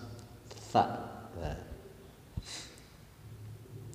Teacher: Tha dibaca ujung lidah dirapatkan dengan gigi atas